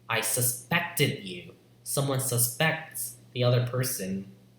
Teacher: the stress falls in the second syllable